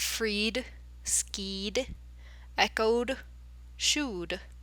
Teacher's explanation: sort of long or short vowel sounds they're voiced so they actually sound like the same like voiced consonant sounds it has a D sound at the end not Ed just D